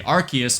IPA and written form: 'ɑrkiəs (Arceus)